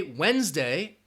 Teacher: if you say Wednesday you're not going to hear that D sound that D is silent